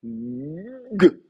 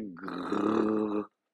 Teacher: Pour le guimel, c'est pareil, normalement il est soit occlusif, g, donc là vraiment on bloque le passage de l'air et d'un seul coup on ouvre, g, et on ouvre.